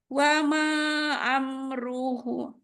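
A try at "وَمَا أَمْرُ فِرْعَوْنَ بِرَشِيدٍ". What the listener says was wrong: Manya kurang panjang. Manya 4. Nadanya mudah. Kalau ini nadanya emang mudah. Datar, yang kedua naik gitu ya. Datar, naik.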